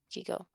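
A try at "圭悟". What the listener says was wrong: Keigo. It's like saying Keiko. You don't say Kiko. Well, they were wrong.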